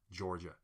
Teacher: my normal speaking voice is rhotic. So after vowels, R's, I pronounce R's like Georgia